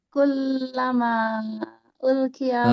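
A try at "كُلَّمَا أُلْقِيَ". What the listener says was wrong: Nah, lebih tinggi Bunda sedikit lagi. Kullama ulqiya.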